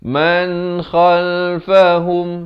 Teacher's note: khal di hujung kerongkong